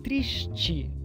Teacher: Então, esse s antigo palataliza e vira sh, e o e final e, triste. Enquanto no Rio, além desse sh aparecer no final da sílaba, nós temos também a palatalização, então triste.